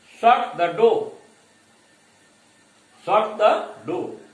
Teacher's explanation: बट so far as falling intonation is concerned, when we order, when we command someone, the intonation goes from high to low